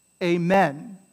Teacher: my pet peeves in english this word is pronounced amen okay in english the word is pronounced amen a like hey right and men like men amen and the stress is on the men amen that's how you pronounce the word in english in latin